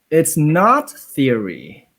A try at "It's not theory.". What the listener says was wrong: Can you go higher on theory? Make theory your highest.